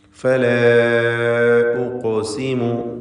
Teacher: ഫലാ ഉഖ്സിമു, ഇവിടെ ഫല എന്നതിലെ ദീർഘം മദ് മുൻഫസിൽ ജായിസ് എന്ന ദീർഘമാണ്. അലിഫിനെ 4 5 ഹറക്കത്തിൻ്റെ അളവിൽ ദീർഘിപ്പിക്കേണ്ടതാണ്.